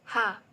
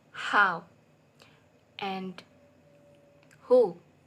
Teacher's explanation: This consonant sound is produced when the flow of air is stopped by the glottis with some construction of the glottis closing, and then release, namely sound ha as in the word how and who. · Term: glottal sound